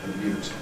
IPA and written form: pəˈljuːt (pollute)